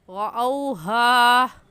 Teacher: हा को एक अलिफ़ के बराबर खींच कर पढ़ेंगे। रअौहा क़ालू यानी बग़ैर खींचे पढ़ना ये दुरुस्त नहीं होगा बल्कि गलत हो जाएगा। · रा के ऊपर ज़बर है इसलिए इस रा को पुर यानी मोटा करके पढ़ेंगे। और मोटा करने का तरीका कि आपके दोनों होंठ गोल हो जाए।